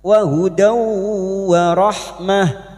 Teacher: Fath tanwin bertemu wau idgham bighunah. Masuk ke huruf wau dan mendengung selama tiga harakat.